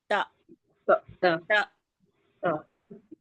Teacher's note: जबान की नोक हमारी लग रही है सामने के दो दांतों के जड़ में